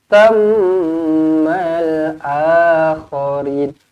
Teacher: thammal mim sabdu wajibul gunnah, rapatkan bibir, dengungkan dua harakat